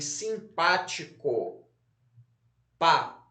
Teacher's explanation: Se a sílaba tônica é a antepenúltima, como em simpático, pá, então a palavra é proparoxítona.